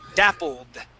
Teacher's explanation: we wouldn't pronounce that ID sound we'd go from that L to the D